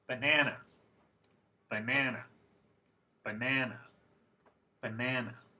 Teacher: the second syllable is different than the other ones it's actually a little longer and the pitch went up on that syllable these types of syllables are called stressed syllables in English you